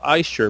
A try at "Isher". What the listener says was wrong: Is it Aisher or Isher? Why Aisher? I would say Isher, like Fisher.